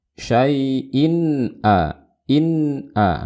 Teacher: Dan di sini tanwin bertemu dengan hamzah, dibaca dengan gunah yang pendek, jelas suara gunahnya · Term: izhar